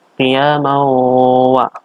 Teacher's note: huruf wawu. Namanya idgham bi ghunnah, yaitu memasukkan tanwin ke wa. Mendengung bacanya. Qiyamawa. Selanjutnya di sini ada wa ala junubihim wa bihim wa.